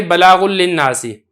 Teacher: نون تنوین تھی لیکن آپ نے اس کو لام کے اندر اس طریقے سے ملا دیا ہے کہ نون اس کے اندر بالکل پڑھا ہی نہیں جا رہا. اس کو کہا جاتا ہے ادغام کامل.